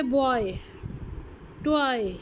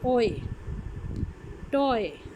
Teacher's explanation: फिर हो जाता है बॉय, टॉय, ठीक है, तो इसमें क्या हुआ कि ओ साउंड जो है वो ई की तरफ जाती है, ओए, टॉय। फिर आ जाते हैं आपका ईयर, बियर, पियर, हियर, इन सब में आपकी एक साउंड जो है वो श्वा की तरफ जा रही है।